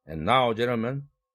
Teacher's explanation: now와 gentlemen 사이에 카마가 있죠? 그런데 멈추지 않았죠. And now, gentlemen, 이렇게 막바로 이어서 발음한 이유는 구두점 앞뒤에 어구가 짧은 경우는 멈추지 않고 그냥 이어라 이런 뜻입니다.